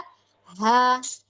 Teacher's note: Nah itu bunyi nafasnya, maksudnya tuh ada aliran nafas yang mengalir secara sempurna karena pita suara terbuka tuh · ha lihat kalau dari segi nafas dia hames · ha jadi area pita suara terbuka dia ketika kita lafadzkan ha ha